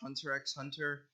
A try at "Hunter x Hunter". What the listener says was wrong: no. It's just Hunter x Hunter. You don't say the X. Nope. It's literally just Hunter x Hunter.